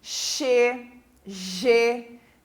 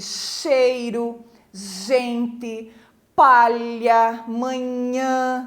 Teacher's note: o dorso da língua no céu da boca chega gelo então a parte de cima da nossa língua encosta lá em cima no céu da boca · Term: palatais